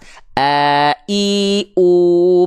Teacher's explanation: Hamzah itu pita suaranya menutup sehingga yang keluar hanya suara saja tanpa mengalir nafas